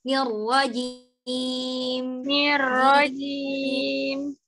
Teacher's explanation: Ketika melafalkan huruf mim sukun, suaranya nggak boleh langsung hilang.